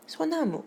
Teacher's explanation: 근데 리을이 탈락해서 소나무가 된 것입니다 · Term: 리을 탈락